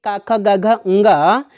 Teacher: जब दोस्तों कंठ मतलब क्या होता है आप जानते ही हैं, इनका जब उच्चारण करने लगते हैं तो जीभ जो होती है दोस्तों कंठ को छूती है। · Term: कंठ वर्ण